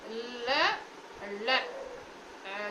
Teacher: மூச்சுக்காற்று வாயறையின் ஓர் இடத்தில் அடைத்து நாக்கின் இரண்டு பக்கத்திலும் வெளியே வந்தால் மருங்கொலி ஒலி எனப்படும்